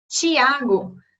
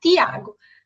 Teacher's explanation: enquanto no Brasil a gente tem gente que vai dizer coisas como Tiago, né, na versão palatal, vão ter pessoas que vão pronunciar Tiago, né, na versão dental